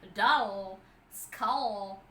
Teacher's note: the air goes out through the sides, but we have the front part of your tongue move towards the alveolar ridge in a way, and we have this wave there through which the air comes out of your mouth, and hence the dark l.